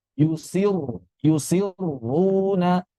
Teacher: Sifat ro kedua ini tebal. Berarti di sini langsung kita baca tebal walaupun sebelumnya kasrah.